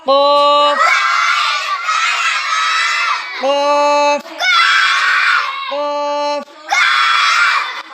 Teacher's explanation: 4 number মাখরাজ জিহ্বার গোড়া তার বরাবর উপরের তালুর সঙ্গে লাগাইয়া 2 নুক্তাওয়ালা কফ